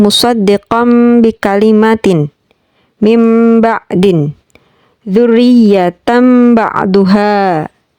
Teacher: Nun mati atau tanwin dibaca sebagai iqlab ketika bertemu dengan huruf ba. Cara membacanya adalah dengan mengubah bunyi nun atau tanwin menjadi mim mati disertai dengan gumaman.